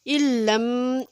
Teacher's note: نون ساکن کے بعد لام حروف جر معلوم میں سے آ گیا ہے، اس کے اوپر ہم غنہ نہیں کریں گے۔ علم، ایک دم سے اس کو پڑھیں گے، علم، یہ ایک ساکن حرف ہے، دوسرا متحرک حرف ہے، اس ساکن حرف کو ہم نے اس متحرک حرف میں اس طرح سے ملانا ہے کہ یہ لام ایک مشدد حرف پڑھا جائے، اس کے لیے یہ علامت بھی اوپر لگا دی گئی ہے، علم۔